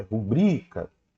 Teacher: a sílaba tônica não tá aqui no ru a sílaba tônica tá aqui no bri